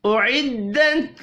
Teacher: تا ساکن پر قلقلہ نہیں کرنا